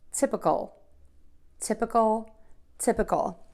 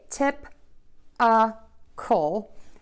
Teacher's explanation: make that second syllable very very short and make sure it's connected to syllable number one so I also hear people say tip uh coal and that's